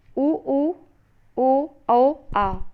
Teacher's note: पश्च स्वर में जीवा के पीछे भाग को उठा करके जिन स्वरों का उच्चारण किया जाता है वे स्वर पश्च स्वर कहलाते हैं